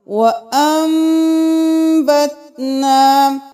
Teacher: آیت نمبر 7 میں وَأَنبَتْنَا نہیں کریں گے، نون کی جگہ میم کی آواز نکالیں گے